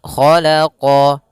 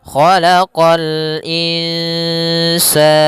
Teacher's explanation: Kha isti'la, huruf kha pangkal lidah kita terangkat.